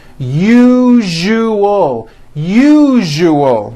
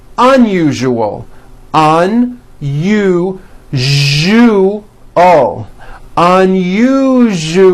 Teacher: pronounce the word usual correctly break it up into three syllables that second syllable jew the one with the underline needs to be voiced put your hand on your throat and feel for the vibration